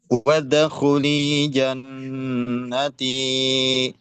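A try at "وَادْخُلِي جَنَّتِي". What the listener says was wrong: Pantulan dalnya masih mengarah ke fathah, Pak. Masih khuli, wada khuli. Harusnya wad, wadkhu.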